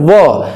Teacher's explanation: जो ऊपर के दांत हमारे हैं वो निचले होंठ को स्पर्श कर रहे हैं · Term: दंत ओष्ठ